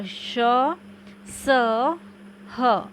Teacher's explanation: ग है उष्म व्यंजन, जिन व्यंजनों के उच्चारण में वायु घर्षण करती हुई बाहर निकलती है